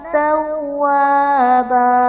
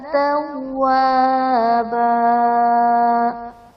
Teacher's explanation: توابا میں دو زبر کی تنوین وقف کی صورت میں الف سے بدل دی جائے گی